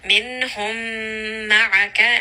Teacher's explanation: So we know that this is going to be idgham. We are going to merge these together. Minhum ma'aka, and give it a little bit of ghunna as well.